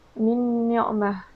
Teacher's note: Min ni'mah, iaitu huruf nun mati ataupun nun sakinah bertemu dengan huruf nun. Jadi di situ kita perlu dengungkan.